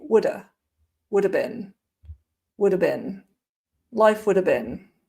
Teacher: you don't even hear the v at the end in fast speech. So all you would hear would be woulda, would have been, life would have been. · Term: very weak have